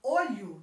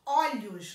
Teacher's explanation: eu também tenho uma diferença no sol na pronúncia dessas palavras olho no singular e pronuncio com o fechado olhos no plural e pronuncio com o aberto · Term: plural metafonico, plural metafônico